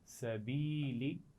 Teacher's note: اسی طرح زیر والے حرف کے بعد اگر یا ساکن آ جائے، یا ساکن سے پہلے زیر آ جائے، تو زیر والے حرف کی آواز کو یا کے ساتھ ملاتے ہیں اور تھوڑا لمبا کر کے پڑھتے ہیں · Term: یا مدہ